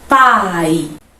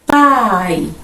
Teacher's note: palavra pai a palavra pai na verdade vai ser decrescente por primeiro pronuncio a vogal a depois a semivogal i dá aquele pico de tonicidade Depois desce pai pronunciou a vogal depois a semivogal por isso que é